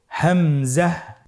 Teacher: হা হরফটি যেখান থেকে আমরা উচ্চারণ করেছি একই জায়গা থেকে আমরা হামজা হরফটি উচ্চারণ করব হলকের শুরু হতে।